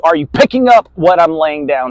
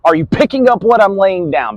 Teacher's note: I want you to pay attention to the word picking up. I flexed that part with volume